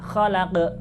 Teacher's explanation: Lafaz terakhir dibaca qalqalah ya, khalaq. Karena di situ ada huruf qaf ya. Tidak boleh dibaca khalaq, tapi harus khalaq.